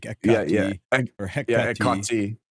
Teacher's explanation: Ekati, in the the ka should be the emphasized syllable, be like ekati or hekati.